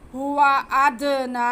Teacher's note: खड़ा ज़बर जो है उसे हम एक अलिफ मद्दा के बराबर खींच के पढ़ेंगे, क्योंकि खड़ा ज़बर अलिफ मद्दा के ही कायम मकाम होता है।